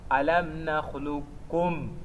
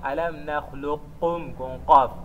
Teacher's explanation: Vejam que o qaf é a letra que está a ser incorporada, ou seja, é a letra que está a ser eliminada. Então, a letra que deve soar é o kaf, se fizermos o idgham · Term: idgham mutaqaribain